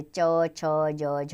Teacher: इन व्यंजनों के उच्चारण में जीवा का अंश भाग व तालु के मध्य स्पर्श एवं संघर्ष दोनों ही होते हैं और ध्वनि इन दोनों के साथ स्पर्श करती हुई और रगड़ खाती हुई निकलती है, जैसे च छ ज झ आदि। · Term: स्पर्शी घर्षी व्यंजन